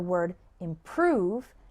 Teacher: the word improve has the stress on the second syllable